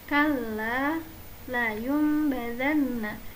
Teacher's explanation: nun atau tanwin dirubah menjadi huruf mim dan bacaan mim harus ditahan selama 3 harokat.